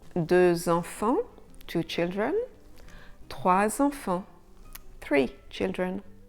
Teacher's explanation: the final X and the final S in DEUX and TROIS will be sounded [z] when followed by a vowel. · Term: French Liaisons